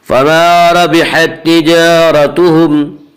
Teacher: اس کا قاعدہ یہ ہے کہ را کے اوپر زبر اور پیش آئے تو را کو پر پڑھیں گے، را کے نیچے زیر آئے تو را کو باریک پڑھیں گے۔ یہاں را کے اوپر زبر ہے اس لیے را کو پر پڑھیں گے۔ فما ربحت تجارتهم، را کو پر پڑھیں گے، را کے اوپر زبر ہے۔